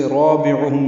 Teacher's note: رابعہم میں را پر پڑھیں گے، الف مدہ ہے، دو حرکات لمبا کریں گے. عین وسط حلق سے ادا کریں گے. ہم میں میم ساکن پہ اظہار شفوی ہے.